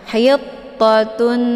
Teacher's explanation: cara bacanya yaitu tanwinnya dimasukkan ke dalam bunyi Nun dengan cara didengungkan hayuptotun jadi ditahan dulu lebih kurang 2 harokat sehingga terbentuk suara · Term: Idgham Bighunnah